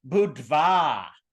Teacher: there's a duh, then there's an aspirated duh, and then there's a sneaky little wa in there, sneaky little v.